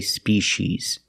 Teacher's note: In America, we say species, using the sh sound. The C makes the sh sound like in fish and wish.